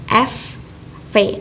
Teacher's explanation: Di sini bisa kita rasakan bahwa ketika kita melafalkan F dan juga V, bibir bawah kita menempel dengan gigi atas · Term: labiodental